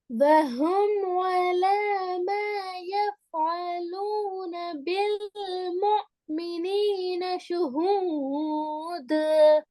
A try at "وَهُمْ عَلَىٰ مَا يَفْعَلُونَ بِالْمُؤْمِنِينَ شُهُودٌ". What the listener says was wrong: ذو அல்ல ஷுஹூத் இது.